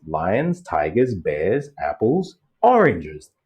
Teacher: the last thing in the list is gonna be falling everything else Rising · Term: listing Paradigm, listing paradigm